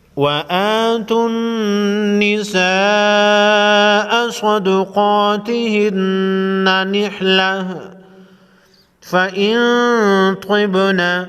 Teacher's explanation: نون ساکن پر اخفاء حقیقی ہوگا، با ساکن کو ہلا کر پڑھیں گے